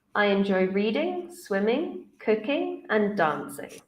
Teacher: you can hear my voice goes up up up down